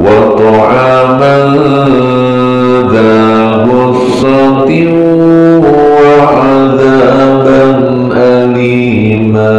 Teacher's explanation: Tanwin bertemu wawu tasdid, kadang dibaca idgham biguna dengan dengung.